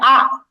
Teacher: আর হামজা হামজা জবর উচ্চারণটা একটু থেমে যাওয়ার মতো, ধাক্কা দেওয়ার মতো উচ্চারণ হবে